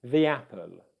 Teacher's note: the weak form of the word the before a vowel would use the weak vowel sound e